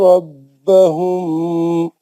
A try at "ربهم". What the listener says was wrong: نہیں غلط. ربہم کا میم میں غنہ کر دیا آپ نے. ربہم پکڑ لینا وہ میم کو.